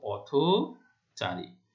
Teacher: স্বাধীন ব্যবহারে হসন্ত উচ্চারিত হলেও সমাসবদ্ধ অবস্থায় পূর্বপদের শেষের অ রক্ষিত হয়ে ও এর মতো উচ্চারিত হয় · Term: সংবৃত উচ্চারণ